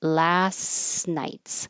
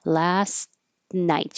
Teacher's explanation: the T and the N are made in the same place. Last, so your tongue's going to the T, which is the same as the N.